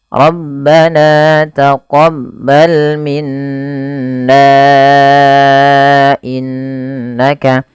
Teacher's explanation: maka na nya dipanjangkan sepanjang empat harakat. Maka menjadi Rabbana taqab bal minna innaka dan ini merubah menjadi hukum tajwidnya yaitu mad jaiz munfasil.